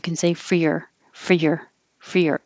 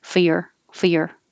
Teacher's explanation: be more casual you can say freer for your fear and if you want to get even more casual you can drop the r